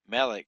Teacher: The accent is on the first syllable instead of the last syllable.